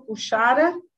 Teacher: Novamente, as características de um som fricativo. Aqui, no caso, a fricativa palatal, não vozeada.